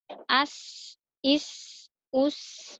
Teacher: huruf sa ini mempunyai suara, desisan